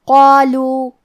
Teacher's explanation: کیونکہ اس کے بعد مد الف ہے، مد الف اپنے پیچھے والے حرف کا حکم لیتا ہے تفخیم میں اور ترقیق میں، لہذا ہمیں مد الف کو بھی بھاری آواز میں پڑھنا ہے · قاف کی ادائیگی زبان کے جڑ اور تالو کے نرم حصے سے ہے. قاف حروف تفخیم میں سے ہے لہذا ہم یہ حرف کو موٹی آواز میں پڑھیں گے.